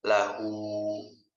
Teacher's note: mad silah qasirah ini panjangnya 2 harokat